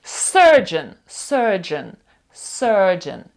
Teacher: сказують більше відкрите е довге е